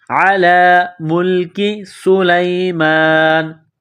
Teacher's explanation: سین میں سیٹی کی آواز پیدا کریں گے، سین کو باریک کریں گے